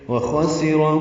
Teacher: خا پر پڑھیں گے. سین باریک ہے بیچ میں ہے اور اس کے بعد را پھر پر ہے. وہ خاسر پڑھ دیتے ہیں لوگ، یہ غلط ہے.